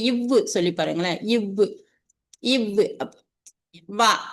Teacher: வந்து பல் இதல் பல் இதல் இய வகாரம் பிறக்கும் அப்படின்னு சொல்றாரு அப்ப அந்த மேல் பல் இருக்கு இல்லையா அது வந்து கீழ இதல வந்து பொருந்த வகாரம் பிறக்குது